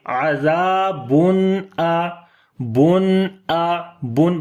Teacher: اظہار حلقی کریں گے، یعنی کہ نون کی آواز کو ظاہر کر کے پڑھیں گے